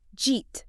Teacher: In a natural conversational flow, nobody actually says, did you eat? It gets smashed together into almost one single word, like jeet. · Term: sound cluster